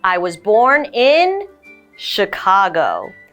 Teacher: The CH here is an SH sound.